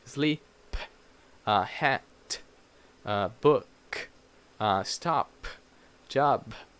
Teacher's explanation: Because we try to pronounce the P and the T and the K, every consonant, in a strong way. But in English, these consonants, when they end in a word, they are very soft pronounced. It's like almost like a puff of air